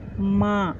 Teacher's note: मुंह और नाक दोनों से ध्वनि निकलती है